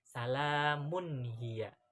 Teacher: Jadi, idhar halki adalah membaca nun sakinah atau tanwin itu dibacanya dengan terang, jelas, tanpa dengung bila diikuti dengan huruf halki tadi yang sudah disebutkan.